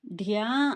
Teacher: ధ్యా అన్నప్పుడు గొంతు నుండి ఒక ఒత్తిడిగా ఆ అక్షరం అనేది రావాలన్నమాట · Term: మహాప్రాణ అక్షరము